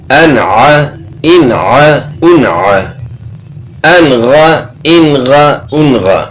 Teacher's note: اب یہاں نون ساکن کے بعد عین ہے اور یہاں نون ساکن کے بعد غین ہے، تو یہ حروف حلقی میں سے ہے، تو یہاں اظہار ہوگا، غنہ نہیں ہوگا